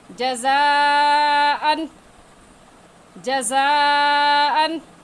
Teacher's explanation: और इसकी मिक़दार 4 अलिफ के बराबर इस मद को खींच कर पढ़ेंगे। इस अलिफ को 4 अलिफ के बराबर खींच कर पढ़ेंगे। 4 अलिफ का हमें ऐसे पता चलेगा कि अपने हाथ की उंगलियों को बंद कर लें। · अन पर हम गुन्ना नहीं करेंगे क्योंकि तनवीन के बाद हरूफ हल्की हमज़ा हा, आइन हा, गैन खा, लाम रा में से हमज़ा आ गया है। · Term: मद्दे मुत्तसिल